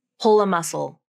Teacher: The next word, is a vowel. So when linking this phrase together, you use a light L and the tongue tip comes up.